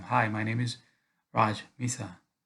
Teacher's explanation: boundary and then our last name you want to go down let the pitch fall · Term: strategic tonality